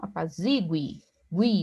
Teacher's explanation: Aqui nós temos um U tônico